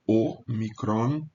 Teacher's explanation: há uma tendência vejam bem de pronunciar o omicron como fechado o micron e as vogais longas serão abertas então por exemplo